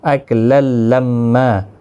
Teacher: تشدید والے حرف کو سختی کے ساتھ پڑھیں تاکہ تشدید ظاہر ہو، میم مشدد پر غنہ بھی ہوگا